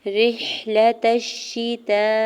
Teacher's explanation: مد متصل ہے تو 4 سے 5 حرکت کھینچ کے ادا کریں گے